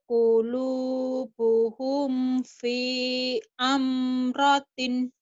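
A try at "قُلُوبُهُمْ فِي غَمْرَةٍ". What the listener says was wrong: Kulubuhum fi gamratin. Bukan amratin, kan ada titiknya.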